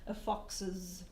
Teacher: It's got an intermediate schwa in there, not like he's, which is a straight contraction.